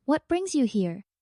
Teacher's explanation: With a gentle rise at the end sounds more inviting than a flat tone. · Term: Rising intonation